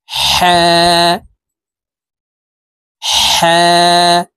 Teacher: মাখরাজ হালুকের মধ্যখান থেকে হবে